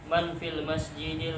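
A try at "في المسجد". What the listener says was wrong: Man fi masjid. Masjidnya tidak ada alif.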